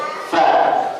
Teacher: Makhraj fa adalah gigi bawah ketemu gigi seri atas.